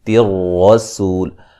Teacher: را کو موٹا ادا کریں گے، سین کو باریک سیٹی سے ادا کریں گے